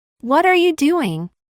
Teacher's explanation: Y como resultado, la consonante T quedó en medio de dos sonidos de vocal. Por lo tanto, de acuerdo a la regla, esta debería ser pronunciada como flap T